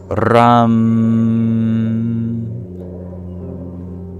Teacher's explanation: as a retroflex approximate we bring our tongue back